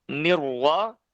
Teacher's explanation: nirullah itu RO nya dibaca tebal ya roknya dibaca tebal [Musik] karena roknya berharokat fathah maka roknya harus dibaca tebal